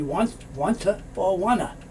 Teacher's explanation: You won't hear two. You may hear one T or no T's.